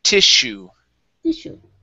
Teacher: stress is at the very beginning, and the double S is an SH sound